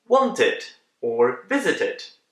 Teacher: And option number three, we pronounce as id. That's a short I and d sound together.